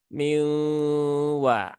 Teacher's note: separuh Nun kemudian Masih Ada separuh wau · Tapi kemudian tidak dibaca minwa ya. Tetap dia masih ada separuh nun, kemudian masih ada separuh waw. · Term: idgham bigunnah yang nakis